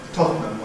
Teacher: Compression removes the syllabicity at the end, giving Tottenham, which is the usual fast pronunciation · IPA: [ˈtɒtnəm]